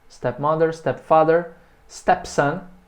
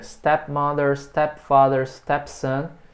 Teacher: Novamente a sílaba tônica é sempre a primeira.